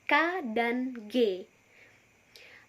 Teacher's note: Dorsovelar, yakni konsonan yang terjadi pada pangkal lidah dan langit-langit lunak, seperti bunyi K dan G.